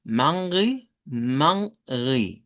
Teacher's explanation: la pronunciación es con una A nasalizada, Mangri, Mangri, con una E irregular y una I al final, Mangri.